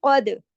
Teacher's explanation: قاف موٹا، دال پہ کلکلا